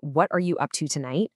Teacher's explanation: you're training your ear to expect that the T and the Y are going to mash together to make a ch sound. You start to anticipate these connections automatically, so you're not getting tripped up trying to catch every single word. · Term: connected speech